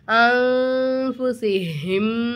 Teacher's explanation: அடுத்த ஃபா வந்திருக்கு ஃபாகுபாவோட எழுத்து அப்போ நுனே சாக்கின் நம்ம குன்னா செஞ்சு ஓதணும்